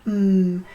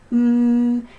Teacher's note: Lips are closed. If you put your hand on your throat, you can feel your voice vibrating. Mhm, and you can hold the sound. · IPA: /m/